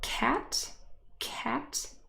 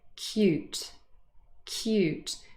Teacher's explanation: cat is aspirated but cute isn't